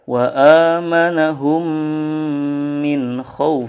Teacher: bunyi mim sukun nya dipanjangkan 2-3 harokat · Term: idgham mitslain